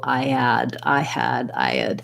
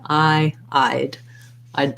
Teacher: it's actually one syllable two sounds the i sound and the d sound just like the word i'd like i eyed that in the